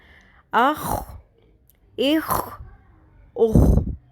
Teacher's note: شروع میں آپ کو باقاعدہ ایسے گلے سے ہی آواز نکالنی ہے خراش کی